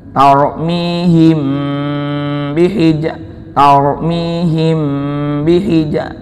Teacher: apabila mim sukun bertemu dengan ba, namanya hukum ikhfa syafawi, disamarkan.